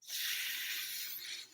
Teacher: this is an interdental fricative meaning it's a friction sound made with your tongue between your teeth